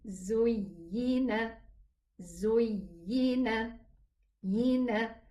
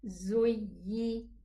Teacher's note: The ya is pronounced from the middle part of the tongue.